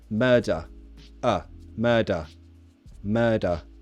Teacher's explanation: That has a schwa sound at the end of it, right? Schwa, murder.